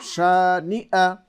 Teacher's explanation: এখানে ইয়া হয়ে যায়, হামজাটা পরিষ্কার করে বলতে হবে